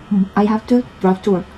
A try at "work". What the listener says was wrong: work의 발음이 너무 건성건성이에요. 일하다 일터로 할 때 일터 work. R 사운드가 안 살아요. 그렇다고 뭐 용궁역으로 work. 이 발음은 아니고. 그러니까 work.